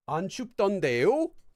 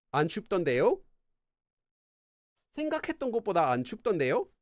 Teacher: the intonation at the end of the sentence will go up. 안 춥던데요? Because it's like a question.